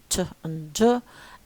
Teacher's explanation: the tip of the tongue touches firmly the alveolar ridge immediately behind the upper teeth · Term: alveolar closure